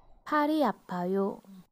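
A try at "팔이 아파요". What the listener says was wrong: Oh, pari, not pali. Pari apayo.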